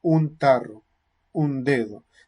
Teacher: simplemente la nasal adopta el punto articulación de la consonante que viene después